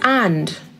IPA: ænd